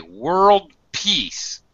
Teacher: world peace is a stop D because I'm combining it with the next word meaning I don't fully aspirate